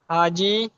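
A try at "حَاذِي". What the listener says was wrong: দেখেন এই এখানে এখানে হাজি করে দিলেন, হাজি, কিন্তু হাজ যে টানটা সেটা কোথায় যাবে বলেন?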